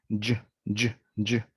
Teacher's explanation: And for j, which is similar, the tip of our tongue is high and pulled back to the center of our mouth, and our lips are rounded a little bit